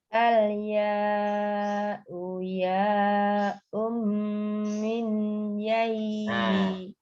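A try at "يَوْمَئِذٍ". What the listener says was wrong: Nun sukunya hilang. Bukan min. Mei. Dia yaknya itu double tasdid jadinya ya. Yai.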